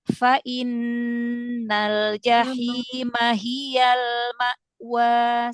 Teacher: Lamnya ditahan sebentar jadi jangan buru-buru ya. Lam sukun ya. · Dia tuh lam punya sifat inhirab bainiah juga ya. Bainiah. Jadi ee dialirkan sedikit ya enggak panjang alirannya tapi jangan syiddah.